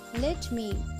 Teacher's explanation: Let is unstressed syllable and the word me is stressed syllable. Both let me are called as one iamb.